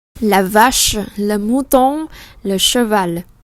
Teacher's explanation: Chúng ta có âm sh, cong lưỡi.